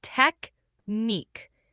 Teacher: The stress is on the second syllable. Try emphasizing the neek part.